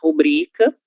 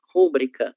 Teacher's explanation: Mas muita gente não sabe, infelizmente, que essa palavra tem como sílaba tônica a sílaba bri